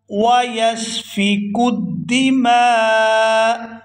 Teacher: من یفسد فیہا ویسفک الدماء، فیہا ویسفک الدماء، یہاں وقف کریں گے تو وقف کی صورت میں حمزہ جو ہے یہ ساکن ہو جائے گا، اور میم کو الف مدہ کی وجہ سے کھینچتے ہوئے حمزہ ساکنہ سے ملائیں گے